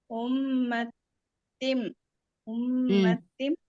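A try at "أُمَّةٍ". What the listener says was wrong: குன்னாவே குடுக்கலையே. அந்த உம்ம அப்படிங்கிறது கொடுத்த குன்னாவை திம் அப்படிங்கிறது குடுக்கலையா? உம்மத்திம் அப்படின்னு முடிச்சிட்டீங்க.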